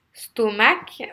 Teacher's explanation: vous allez accentuer la première syllabe vous avez deux syllabes ce taux est mal vous accentuez la première est pas l'envers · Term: accents toniques